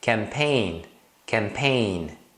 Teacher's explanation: nessas palavras com GN só pronuncie o n final